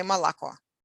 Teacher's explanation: in speech, we say malako, almost like A instead of O, except it's shorter. That sound that is known as schwa, like turned upside down E in English.